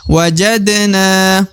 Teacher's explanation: sampingnya wajadna perhatikan wajadna wajadna huruf Dal lagi berada di tengah Dal sukun ya yang merupakan huruf pantul harus dipantulkan · Huruf dal lagi berada di tengah, dal sukun ya, yang merupakan huruf pantul, harus dipantulkan. Wajadna. Kemudian na yang di ujung dibaca 2 harokat, wajib karena terdapat alif di depan huruf na, maka harus dipanjangkan 2 harokat.